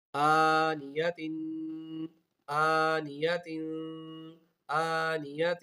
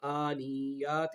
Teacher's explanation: حمزہ کے اوپر کھڑا زبر ہے، اس کو کھینچ کر پڑھنا ہے، نون کے نیچے زیر ہے اور یا کے اوپر زبر ہے، ان دونوں کی آوازوں کو بالکل نہیں کھینچنا، اور تا کے نیچے دو زیر ہے، جیسا کہ آپ کو بتایا کہ اس پہ غنہ کر کے پڑھنا ہے.